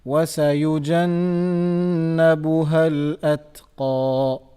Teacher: the letter ta, which is sakin, so we have to make sure that we are doing the hams on it. That sound has to be there. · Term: qaf